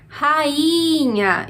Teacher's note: esse I é uma sílaba sozinho e é a sílaba que a gente fala com mais força. Portanto, a sílaba tônica.